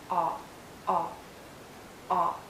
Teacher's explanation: a short sound and a very open and rounded sound. Make your lips rounded and lower your jaw.